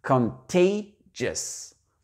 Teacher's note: Donc, ça fait contagious. Donc, l'accent tonique se fait sur le tay. C'est une voyelle ouverte, donc on la prononce pleinement. Et la première syllabe, elle est très, très light, donc ça fait contagious.